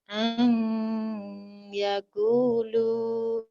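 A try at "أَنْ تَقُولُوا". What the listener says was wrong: Iya, di situ titiknya di atas ya. Ang takulu.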